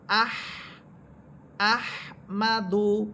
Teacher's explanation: হা হরফ আমি যখন বলতেছি তখন বাতাস বের হচ্ছে